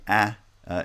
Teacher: a low front vowel with a lot of sonority because it's a very wide air flow path